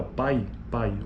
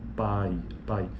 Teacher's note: E é um ditongo decrescente porque, veja, o pico da sílaba já aconteceu, já ocorreu no A